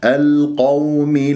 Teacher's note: والواو لين في كلمة القوم، ما تقول القوم، هكذا البعض ينبرها على أساس أنه هو انصرنا على القوم الكافرين، لا، القوم بهذه الطريقة، والقاف مفخمة مرتبة ثانية لأنها مفتوحة. اللام لما تكون قمرية القوم الكافرين يجب أن يجري فيها الصوت فترة زمنية بسيطة لأنها من أحرف التوسط لين.